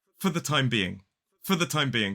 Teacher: in the expression for the time being we often use the weak form of the preposition for